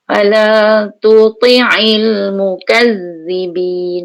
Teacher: Ujung lidah belakang gigi kat gusi tu. Rumah dia sama tapi sifatnya lain. Ta nipis, to tebal. So, fala tuti kena switchkan daripada nipis ke tebal.